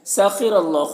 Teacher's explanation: سخر اللہ، خا حروف مستعلیہ میں سے پر پڑھیں گے، را کے اوپر زبر ہے تو را کو پر پڑھیں گے، اور یہاں پر اللہ کے لام سے پہلے را کے اوپر زبر ہے تو اللہ کے لام کو بھی پر پڑھیں گے۔ کھڑا زبر ہے، ایک الف کے برابر کھینچ کر پڑھیں گے۔